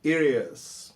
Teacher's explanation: Está em inglês é it is, ok? E ao emendar na fala, o T vira um som meio R